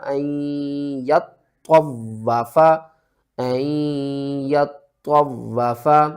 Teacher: اس کو کس طرح پڑھنا ہے، فَلَا جُنَاحَ عَلَيْهِ أَن يَطَّوَّفَ بِهِمَا، آگے وقف مطلق ہے تو آپ نے سٹاپ کرنا ہے اور وقف کی صورت میں بِهِمَا ہی پڑھا جائے گا، اور تشدید والے جو 3 لیٹر ہیں ان تینوں کو آپ نے سختی کے ساتھ پڑھنا ہے